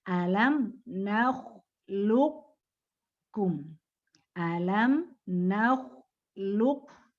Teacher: Ya, kalau naqis berarti isti'alanya. Nah, isti'ala dari qafnya itu masih tetap ada. Tapi karena dia idgham, maka qalqalahnya hilang.